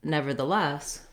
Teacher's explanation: when we put them together into nevertheless we stress on the last syllable less